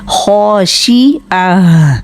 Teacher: پھر ہے خاشعہ، خا کو بھی موٹا کرنا ہے اور 2 حرکت لمبا بھی ہوگا، کھڑا زبر ہے اوپر. شین زیر شی کو بالکل باریک کرنا ہے، خاشعہ. آگے آئین کے اوپر زبر ہے اور اس کو ساکن ہا کے ساتھ ملانا ہے.